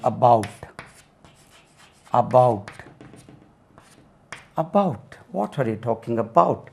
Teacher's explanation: Stress lies on the second syllable.